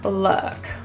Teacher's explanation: It is very neutralized with slight protrusion of lips, rather than oo, loo, but more of a l. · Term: upsilon sound